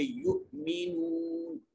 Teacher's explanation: हमजा साकिन है, इसको झटका देकर पढ़ेंगे · यहाँ वाव और उससे पहले पेश है, इसको लंबा करके पढ़ेंगे।